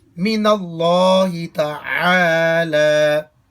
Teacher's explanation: تعالی میں عین کو حلق کے درمیانی حصے سے نکال کر واضح کریں گے